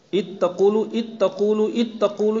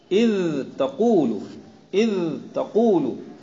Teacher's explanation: روایت حفص میں ادغام ہے ہی نہیں، لہذا صفت رخاوت اظہار و ادغام کی ادا کے مابین ممیز بنے گی۔ ادغام کرنے والا رخاوت نہیں ادا کرے گا، اظہار کرنے والے کے لیے رخاوت ضروری ہے